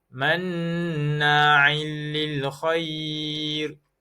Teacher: Idgham bila gunnah, tanpa dengung kerana huruf lam. Tanwin bertemu dengan huruf lam bila gunnah.